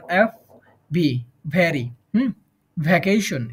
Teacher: এফ এবং ভি দুইটা উচ্চারণ হবে উপরের দাঁত এবং নিচের ঠোঁটের সাথে